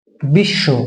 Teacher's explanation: এই ব টা কিন্তু উচ্চারণ করি না